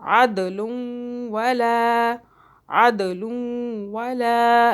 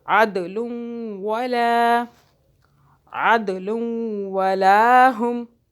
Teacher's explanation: दाल पे फिर कलकला हो रहा है, अद झटके से पढ़ रहे हैं।